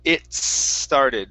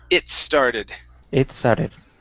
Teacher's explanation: that t with the S A little bit more it started so you're going to roll right into it don't worry about finishing the T sound